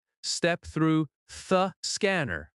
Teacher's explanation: The word through can reduce slightly and sound softer. "Step through thuh scanner." In quick speech, through the might blend together.